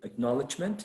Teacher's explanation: so acknowledgement would be stressed on the second syllable